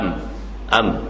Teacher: mim makhraj di mana Dua bibir mulut yang dirapatkan